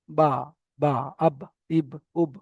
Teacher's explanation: বায়ের মাখরাজ হচ্ছে দুই ঠোটের ভিজে অংশ থেকে বা উচ্চারিত হয়। দুই ঠোটের ভিজে অংশ থেকে।